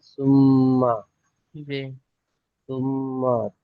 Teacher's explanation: তাজদিদ মিম এর উপরে হওয়ার কারণে গুন্না করা ওয়াজিব তাই এক আলিফ গুন্না করতে হবে